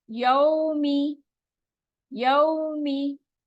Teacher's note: वाव साकिन है, उससे पहले वाले हर्फ पर जबर है, और इसको -2 स्ट्रेच करेंगे। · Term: वाव लीन